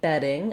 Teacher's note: in bedding, I have first syllable stress, vowel eh, like in red. So you can use a word like red or bed to help you get that vowel if you have some trouble with it.